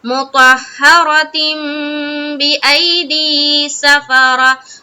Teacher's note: تنوین ہے، دو زیر کی تنوین ہے، اس کے بعد با ہے، تو یہاں پر پھر نون کی جو آواز ہے اس کو بدلنا ہے میم سے اور پھر غنہ اور اخفا کے ساتھ پڑھنا ہے